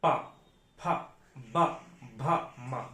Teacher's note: ओष्ठ व्यंजन हम दोनों ओंठे बंद करके बोलते हैं। अगर ओष्ठ व्यंजन कोई है और उसे बोलेंगे तो दोनों ओंठे आप आपस में सटेंगे जरूर।